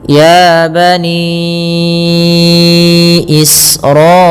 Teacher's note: Maka ya kita panjangkanya empat harakat atau lima seperti ini. · Ya bani Israila. Kemudian alirkan nafas ketika melafalkan sin karena sin punya sifat hamz